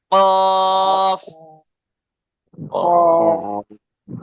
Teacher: জিভের গোড়া এবং তার বরাবর উপরের তালুর সাথে লাগিয়ে উচ্চারিত হয় 2 নোক্তাওয়ালা কফ। তাহলে জিভের গোড়াটা আপনার ওই সোজা উপরের তালুর সাথে লাগাতে হবে, কফ, কফ।